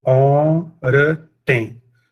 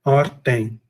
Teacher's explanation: é um elisão, um apagamento do schwa na penúltima sílaba